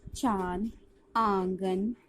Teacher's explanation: इसका उच्चारण नाक और गले दोनों से होता है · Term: अनुनासिक